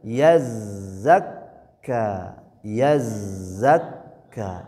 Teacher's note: Huruf zai dengan kaf bertasydid. Bedanya zai mengalir suaranya kaf tertahan.